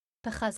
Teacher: Pachaz is a noun impetuosity, and therefore its accent is on the first syllable